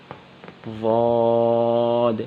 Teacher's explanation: ضاد کا مخرج ضاد کی ادائیگی کی جگہ زبان کی کروٹ، زبان کی سائڈ اور اوپر کی 5 داڑھیں، زبان کی سائڈ جب اوپر کی 5 داڑھوں سے ٹکرائے گی وہاں سے ضاد ادا ہوگا، ضاد۔